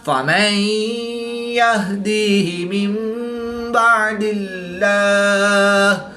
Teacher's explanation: نون ساکن کے بعد حرف با ہے تو یہاں پر اقلاب ہوگا، یعنی نون ساکن کو میم سے بدل کر غنہ زمانی کر کے پڑھیں گے